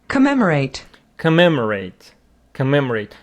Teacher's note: the stress falls on the second syllable and you should pronounce it commemorate.